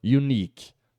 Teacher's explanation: Lembrando que a sílaba tônica dessa palavra é a última aqui